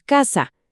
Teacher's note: Simplemente el lugar de articulación. La lengua, en vez de ir detrás de los dientes a la zona dental, se fue hasta atrás a la zona velar.